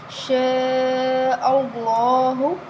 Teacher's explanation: شاء اللہ، بڑی مد ہے، 5 الف کے برابر لمبا کریں گے، اللہ والا نام زبر کی وجہ سے موٹا پڑھا جائے گا